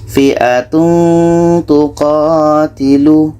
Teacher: Ketika kita menyebut tanwin, kita sudah merasakan huruf ta, sehingga ada bunyi eng di situ. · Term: ikhfa hakiki